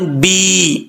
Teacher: ایک الف کی مقدار لمبا کریں گے کیونکہ یا مدہ ہے